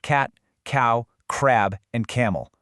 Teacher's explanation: feel that sharp little puff of air coming from the back of the mouth